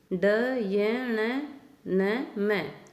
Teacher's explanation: ह, नासिक्य, नाक। ड, य, न, म, कि इन वर्णों की आवाज़ नाक में से आती है। जैसे हम कहते हैं ना गुनगुनाते हुए बोल रहा है वो, तो नाक में बोल रहा है, तो इन वर्णों की आवाज़ भी नाक से आती है।